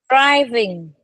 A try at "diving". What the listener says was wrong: Not drive. Driving is the R. This is the I. Dive. Diving. Diving.